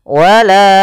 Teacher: huruf hamzah yang datang setelah huruf mad di sini huruf alif maka kita panjangkan untuk huruf la sepanjang empat harakat dan kita namakan di sini hukum tajwiidad Jaiz munfasil empat harakat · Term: Mad Jaiz munfasil